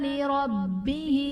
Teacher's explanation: لربہ میں را پر زبر ہے، را کو پر پڑھا جائے گا، با کے نیچے زیر ہے، با حرف قلقلہ مشدد ہے تو یہاں پر قلقلہ خوب جماؤ کے ساتھ ادا ہوگا۔